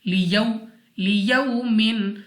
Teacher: واو ساکن سے پہلے زبر، واو لین بغیر کھینچے بغیر جھٹکا دیے معروف پڑھیں گے، یعنی جلدی سے